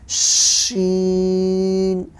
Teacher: زبان کے بیچ کے حصے سے شین ادا ہوتا ہے